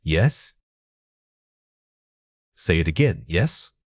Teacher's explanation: When you say yes, practice raising your voice slightly at the end. This rising tone automatically signals to the listener that you are confirming or seeking clarification, even if it's just an agreement.